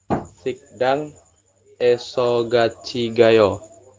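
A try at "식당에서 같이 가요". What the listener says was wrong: Tapi yang ininya bukan sikdang ya. Poin nomor 12 perubahannya jadi apa? Yakin masih sikdang? Dibacanya siktang ya.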